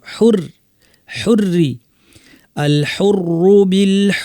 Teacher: র তাসদিদর সাথে যের পুরাটাই পাতলা